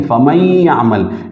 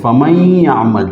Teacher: نون جو ہے یہ مکمل طور پر نہیں پڑھا جاتا، نون یا کے ساتھ بندھا ہوا ہے، ٹھیک ہے، اور یا کا یا میں ادغام ہوا ہے، ٹھیک ہے، فَمَن يَعْمَلْ. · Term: ادغام مع الغنہ